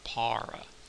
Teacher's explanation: you're probably going to pronounce that word para with an aspirated P, that's what that small h indicates, and a very English sounding R, para, right?